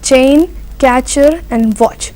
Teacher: Affricates according to IPA are also known as combination of 2 letters, that is t sound and sh sound, which becomes cha